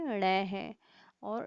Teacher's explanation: इन ध्वनियों के उच्चारण में जीभ की नोक उलटकर आगे की ओर होती हुई नीचे की ओर फेंकी जाती है, मतलब जीभ जो होती है वो पूरी तरीके से घूम जाती है। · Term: उत्क्षिप्त